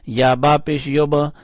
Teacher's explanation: با کو اٹھایا یعنی با کے اوپر قلقلہ کیا